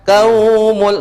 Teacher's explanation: Ini waw sebelumnya berharakat fathah. Ini bukan mad asli. Enggak boleh dipanjangkan.